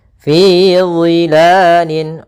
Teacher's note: makhrajnya yaitu daripada ujung lidah kita menempel dengan gigi seri atas dan dia pangkal lidah terangkat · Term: huruf dha